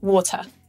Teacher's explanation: this first syllable is stressed and so the second syllable becomes weak just like a schwa